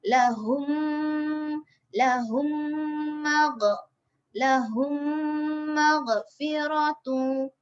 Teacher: Huruf mim yang berbaris. Mim mati jumpa dengan huruf mim yang berbaris juga. Lepas tu cara bacaan dia kita kena dengungkan dia dengan kadar 2 harokat jugalah. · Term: idgham mislain shaghir